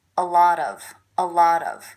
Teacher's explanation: with the stress happening on the middle word